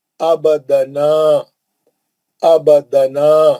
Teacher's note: با پہ خلخلہ کریں گے، نون میں مد اصلی کریں گے